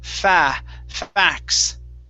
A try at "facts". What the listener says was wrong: Okay, with a S there at the end. You're almost there, okay?